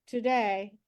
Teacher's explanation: So for the US and UK English, when I say something like today, I'm having a very gentle tap. It's not a firm tap in American English for today, and the tap somewhere between these two areas.